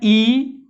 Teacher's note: ई बोलते हैं तो मुंह बंद होता है लगभग, ई छोटी बड़ी दोनों। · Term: समर्थ स्वर